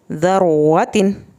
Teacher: را کا ساؤنڈ موٹا اور پر کر کے پڑھا جاتا ہے